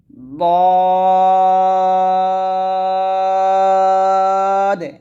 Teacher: লাস্টে দেখুন এখানে দ আসছে মানে দাল আর দাল যেহেতু কলকলা হরফ তাই আমরা সদ এবং দ উচ্চারণ করার সময় লাস্টে কলকলা করতেছি